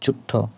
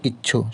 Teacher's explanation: জোর দেওয়ার জন্যে শব্দের অন্তর্গত ব্যঞ্জন দ্বিত্ব উচ্চারিত হয়, অর্থাৎ ব্যঞ্জন ধ্বনি দ্বিত্ব বা দুইবার উচ্চারিত হবে। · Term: লং কনসোনেন্ট